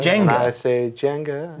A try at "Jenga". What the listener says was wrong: No, J. First J-E.